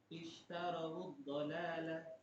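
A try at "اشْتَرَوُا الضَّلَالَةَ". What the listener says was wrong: Iya. Jadi wawnya itu dibaca dhammah.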